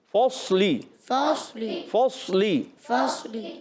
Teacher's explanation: ہونٹ گول نہیں کرنے ہوتے، بغیر گول کیے ہونٹ آپ نے صاد کو پر پڑھنا ہے